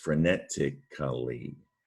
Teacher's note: when you pronounce it, it's almost like you only hear the ly